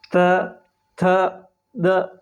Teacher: जब हम ये वर्ण बोलते हैं तो हमारी जीभ सीधी दांतों को टच करती है। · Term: दंतीय वर्ण